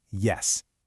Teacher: It's not as busy as the alvola ridge, but it's absolutely crucial for the J sound like in the word yes. Feel how the front of your tongue kind of arches up to get really close to the pallet. It's channeling the air right through that narrow space.